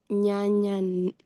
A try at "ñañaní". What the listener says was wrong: ñañaní. Exacto. Ahí sí el ña, ¿por qué? Porque es un verbo nasal.